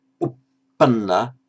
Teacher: And of course the tpa in Pali but not Sanskrit will coalesce to become a double p.